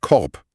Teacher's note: Das K formen wir ganz hinten im Hals.